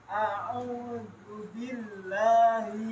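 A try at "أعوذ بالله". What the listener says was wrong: Gak usah di bil, gak usah dibanting. Gak bil, enggak. Biasa. Billahi. Gak usah dibanting. Bil, enggak. Billahi, biasa saja.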